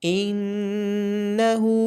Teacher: نون کے اوپر غنہ کیا جائے گا اور ہا کو لمبا کر کے پڑھا جائے گا الٹی پیش ہونے کی وجہ سے۔